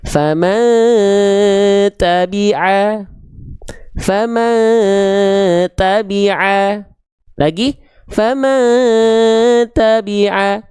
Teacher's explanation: Huruf tadi huruf ta dibaca dengan menyamarkan bunyian disertai dengung dua harakat · Udah enggak ada lagi bunyiannya. Dia sudah disamar dengungkan ke huruf ta. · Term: ikhfa hakiki